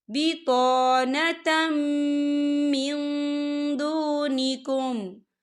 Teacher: یا ایہا الذین آمنوا لا تتخذوا بطانة من دونکم، یا دیکھیں بطانتم، تا کے پر تنوین ہے، تنوین کے بعد جو ہے میم آ رہا ہے، اور میم جو ہے حروف یرملون میں سے ہے، تو یہاں پر ادغام ہوگا اور ہم اسے غننے کے ساتھ پڑھیں گے